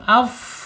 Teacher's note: sedangkan fa ini mempunyai sifat hams ketika sukun